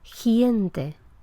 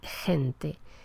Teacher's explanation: la articulación de esta velar ante una vocal que sea palatal, o sea, ante vocal E o ante vocal I, es muy anterior, se pronuncia en la parte anterior de la boca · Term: pronunciación palatal